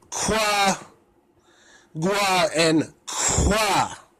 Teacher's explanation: The third series is the labialized velars, which means that while the velar sound is being produced, a wa sound is being produced at the same time.